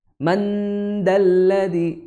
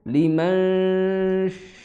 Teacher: Jangan ditempelkan terlebih dahulu ke huruf setelah nun, tapi di ngambang dulu, tapi sudah siap, tinggal tek kayak gitu. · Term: ikhfa